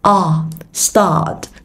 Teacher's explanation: nó cũng là âm a dài, miệng bình thường, mở theo chiều dọc.